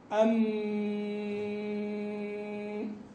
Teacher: اعتماده في الجريان على الخياشيم وليس على الفم أو الحلق